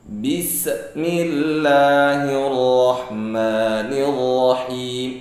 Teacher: Sin termasuk huruf rokhawah, mengalirnya suara. Suara terus mengalir sampai kita berhenti mengucapkan huruf sin atau napas kita habis.